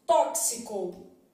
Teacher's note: esse x que tá aparecendo aqui ele produz o que a gente chama de dífono é um x com som de KS